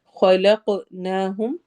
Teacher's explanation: خوا کو موٹا کرنا ہے، قاف کو بھی موٹا پڑھنا ہے اور ساتھ کلکلا کرنا ہے، ایکو ساؤنڈ ہوگی